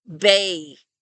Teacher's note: At the end there, the vowel almost slips into an E sound. Bay. If you can make that A sound without doing that diphthong at the end, then you are going to get pretty close.